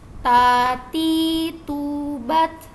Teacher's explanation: dari ujung lidah bertemu dengan pangkal gigi seri atas dengan penekanan dan dekat dengan langit-langit atas · huruf ta ini juga punya sifat hams ya. Jadi ada suara angin sedikit.